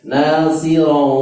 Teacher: Kemudian ro tanwin ketemu dengan wawu, itu idgham bi gunnah sehingga masuk ke rongga hidung ya, istilah masuk ke rongga hidung namanya khaisum, masuk bintang.